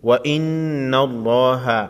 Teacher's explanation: नून मुशद्दद पर गुन्ना होगा और लफ्ज़ लाम के लाम को मोटा पढ़ेंगे।